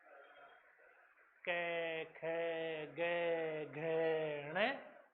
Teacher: इन सबका उच्चारण स्थान कहां से है रे? कंठ से। कै ख ग घ ण हाथ लगा के देखो यहां वाइब्रेट होगा।